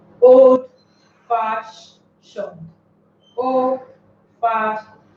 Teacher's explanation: Fash carries the stress because this is the vowel that marks the syllable here.